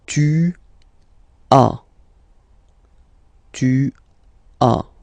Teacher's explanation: As usual in French, final S is not pronounced.